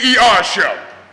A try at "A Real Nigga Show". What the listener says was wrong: A real nigga show. No, it's not Nigger. It's Nigga.